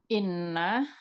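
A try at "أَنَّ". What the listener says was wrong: Kalau hamzahnya di atas berarti anna gitu ya. Kalau hamzahnya di bawah baru inna.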